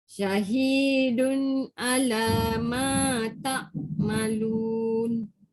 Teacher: Ma ada alif. Ma kena panjang.